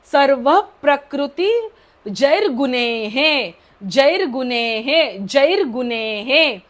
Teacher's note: पोटाला हपका बसतो विसर्गाचा ह बाहेर सोडायचा